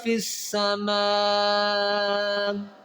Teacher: فی السماء میں مد کریں گے اور اس حمزہ کو نہیں پڑھیں گے بلکہ اس حمزہ کو ساکن کریں گے. فی السماء یہاں سٹاپ کریں گے.